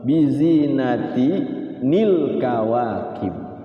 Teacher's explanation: Asalnya bizinatin al kawakib, ya kan? Hilang tanwin, jadi ti, timbul nun kecil ni. Nun wikoyah itu selalu ni.